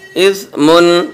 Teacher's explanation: سا کا مخرج زبان کی نوک اوپر والے دانتوں کی نوک سے ٹچ ہو جائے گی بس، اور دونوں دانت الگ الگ رہیں گے۔